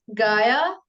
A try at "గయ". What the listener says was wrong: గాయానా ఏంటది? గయా, గాకు దీర్ఘం లేదు, గయా.